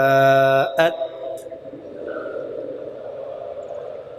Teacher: تو زبان کی نوک جو ہے وہ اوپر والے دانتوں کی جڑوں میں لگے گی۔ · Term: تا